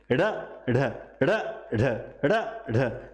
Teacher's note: ये ड ढ ये दो ध्वनियां है इनको बोलते हैं उत्क्षिप्त ध्वनि उत्क्षिप्त का मतलब होता है फेंके हुए जब आप ड ढ बोलते हो तो जीव ऐसा लगता है · जब आप ड़ ढ बोलते हो तो जीभ ऐसा लगता है बाहर की ओर फेंक रही है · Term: उत्क्षिप्त ध्वनियां